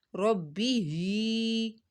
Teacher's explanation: ہی کو ہم نے ایک الف کے برابر کھینچنا ہے کیونکہ یہاں پہ کھڑی زیر ہے